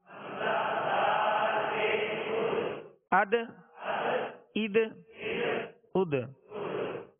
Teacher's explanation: اس میں قلقلہ کرنا ہے یعنی آواز لوٹتی ہوئی آئے، آواز میں جنبش ہو